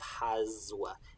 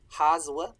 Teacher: If S is between vowels, it's going to sound like a Z. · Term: intervocalic voicing